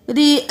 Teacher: आ को हमने 5 अलिफ के बराबर खींचा क्योंकि यहाँ पर मद्दे लाजिम है